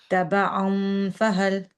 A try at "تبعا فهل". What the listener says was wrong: You don't do the wow. Don't round the lips. Rather, the top teeth need to come down towards the bottom lip without rounding of the lips.